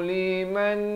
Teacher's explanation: Di sini nun mati bertemu nun didengungkan, masuk beserta dengung 2 harakat